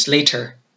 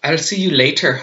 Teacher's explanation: they really emphasize all the consonants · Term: Irish